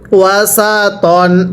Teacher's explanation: তনকে টান পড়া যাবে না, ত আলিফ দুই জবর তনই পড়তে হবে। পড়ুন ওয়া সা তন।